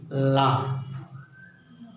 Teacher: और पार्श्विक व्यंजन के तहत ला आता है, और ला का उच्चारण आप करिए ला। तो अगल बगल से जिह्वा के पार्श्व से वायु निकलती है, और प्लस जिह्वा की नोक जो है हमारे वर्त को स्पर्श कर रही है ला, इसीलिए ये पार्श्विक व्यंजन है।